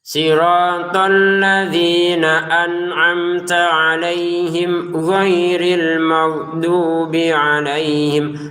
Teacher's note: huruf ghin perhatikan jangan terlalu kaku dan kasar seperti huruf G dalam bahasa Indonesia